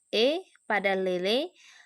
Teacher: bunyi yang dihasilkan dengan cara posisi lidah meninggi sehingga agak mendekat langit-langit keras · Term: bunyi agak tinggi